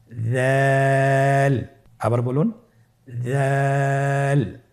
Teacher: উচ্চারণ করার সময় অবশ্যই 3 আলিফ টেনে পড়তে হবে। দালের মাখরাজ হলো জিহ্বার আগা সামনের উপরের 2 দাঁতের আগার সঙ্গে লাগিয়ে উচ্চারিত হয়।